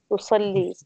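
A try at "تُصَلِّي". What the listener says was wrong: तुसल्ली, तुसल्ली के यहाँ पे दो नुक्ते हैं तो तुसल्ली पढ़ेंगे और मुसल्ला के यहाँ पे नुक्ते नहीं हैं।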